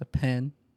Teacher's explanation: you got stretch out the E